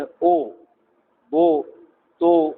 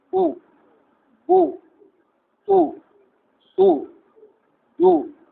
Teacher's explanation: او پڑھنے میں ہونٹ پوری طرح گول نہیں ہو رہے، کم گول ہوئے اور منہ کھل رہا ہے، او بو تو یہ ضمے کی آواز غلط ہے۔